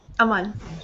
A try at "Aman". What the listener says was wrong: It's not Amin. It's Aman.